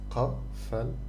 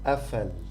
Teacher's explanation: However, in Egypt we pronounce it a, like Hamza, like a in the beginning of a word.